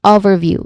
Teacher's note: with the emphasis on the first syllable